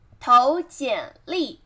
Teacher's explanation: 投, second tone, 简, third tone, 历, 投简历.